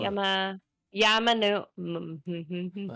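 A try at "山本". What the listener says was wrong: Two M's in there, so Yamamoto. Yamamoto.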